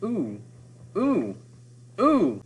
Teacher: For one, that does slow down the meter once again, so it forces us to move more slowly with those long vowels. Ooh is a pretty long sound to make. It's certainly longer than O.